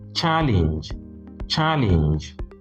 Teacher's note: whether it is a noun or a verb, it is always stressed on the first syllable